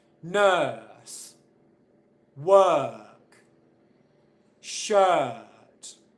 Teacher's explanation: I don't pronounce the R sound in any of these words.